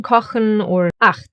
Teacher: It sounds harsher and is formed more in the throat, like for example in kochen or 8.